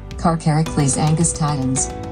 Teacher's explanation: In the US South, many people have defaulted to a pronunciation where the second to last syllable is stressed.